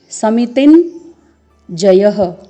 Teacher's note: अर्धवर्ण य लिखा हुआ है, य, लेकिन जब हम इसका उच्चारण करते हैं तो न की ध्वनि आती है